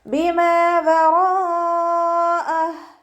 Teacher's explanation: റോയിൻ്റെ കൂടെ മദ് വന്നു. മദ്ദക്ഷരത്തിന് ശേഷം അതേ വേർഡിൽ തന്നെ ഹംസയും വന്നു. മദ് വാജിബ് മുത്തസിൽ 4 5 കൗണ്ട് നിർബന്ധമായിട്ട് നീട്ടിക്കൊടുക്കണേ. ഹാഇന് ശേഷം യാ സ്വൈറയാണ് വന്നിട്ടുള്ളത്, 2 കൗണ്ട് നീട്ടിക്കൊടുക്കുക. · വാവ് ഉച്ചരിക്കുമ്പോൾ ചുണ്ടുകളൊന്ന് വട്ടത്തിൽ പിടിച്ചിട്ട് ഉച്ചരിക്കാൻ ശ്രദ്ധിക്കുക